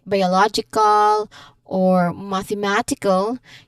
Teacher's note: in longer words like biological or mathematical, you'll hear the stress shift deeper into the word like law in biological and ma in mathematical.